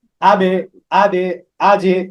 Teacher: আহ, কলকলা করে পড়তে হয়। কলকলা, কলকলা মানে প্রতিধ্বনি বা ধাক্কা দিয়ে